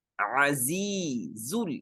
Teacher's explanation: دیکھیں آواز میں سیٹی ہے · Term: سیٹی کی آواز